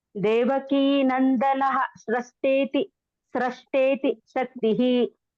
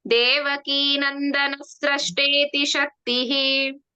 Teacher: ನಂದನಃ ಪೂರ್ತಿ ವಿಸರ್ಗ ಬೇಡ ಅಲ್ಲಿ. ಮುಂದಿನ ಅಕ್ಷರ ಸ ಇದೆ ಅಲ್ವಾ.